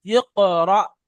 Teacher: ব্যাস, এখানে দেখেন, হামজা কফ জের ইক, র, হামজা জাবার র। হামজা যুক্ত সাকিনকে একটু ধাক্কা দিয়ে ঝাটকা দিয়ে পড়তে হয়, তাই র, হামজা জাবার র, এটাকে আমাদের ঝাটকা দিয়ে পড়তে হবে।